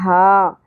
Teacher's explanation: حلق کے درمیان میں سے ہا کی ادائیگی ہوگی۔ یہی اگین یا ساکن سے پہلے زبر، حرف لین نرمی سے پڑھنا ہے، نون کے اوپر کھڑی زبر ہے، نا ایک الف کے برابر کھینچیں گے، ہا زبر کے ساتھ الف حرف مدہ آ گیا تو یہاں پر بھی ہم ایک الف کے برابر ہی کھینچیں گے، ہا۔